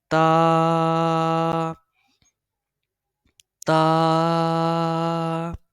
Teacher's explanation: تا کو بھی ایک انگلی کی مقدار کے برابر کھینچ کے پڑھا جاتا ہے اور اس کی ادائیگی یہ زبان کی نوک اور اوپر کے دانتوں کی جڑ کی مدد سے ادا ہوتا ہے۔